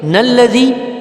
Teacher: اس کو لام کو نون کے ساتھ ملا کے پڑھیں گے